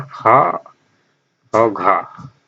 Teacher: तो जैसे यहाँ पे महाप्राण में खा और घा, तो इनका उच्चारण करते समय एक झंझनाहट होती है और ज्यादा मात्रा में वायु निकलती है, इसलिए महाप्राण कहा गया है।